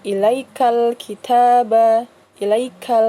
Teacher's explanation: Jadi alif lam yang bertemu dengan salah satu huruf qamariyah, yaitu huruf kaf, ya. Dan ini dibacanya jelas, ya. Jadi ilaikal kitaba, ilaikal, ya. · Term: alif lam qamariyah